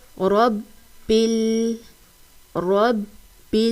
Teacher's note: ادا کرنا ہے للہ، للہ، الحمد للہ، الحمد للہ، رب رب را کو پر پڑھیں گے، یعنی را کو موٹا پڑھا جائے گا ، کیونکہ را کو پڑھنے کا قاعدہ یہ ہے کہ جب